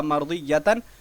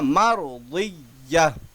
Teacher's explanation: وہ گولتا ہائے ساکنہ سے بدل جاتا ہے یعنی ہا بن جاتا ہے. مرضیہ تھا مرضیتن لیکن بن گیا مرضیہ.